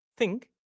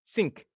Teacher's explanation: Common mistakes, turning the th into a s sound. that that tongue goes back into the mouth.